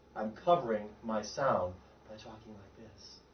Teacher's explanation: I'm way in the back of my throat. I'm not on the hard palate. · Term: covered sound